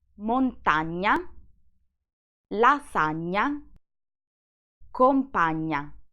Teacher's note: In Italian, instead, when these two letters are combined together, they make one sole sound. It's a nasal sound, and to reproduce it, you need to put your tongue on the palate.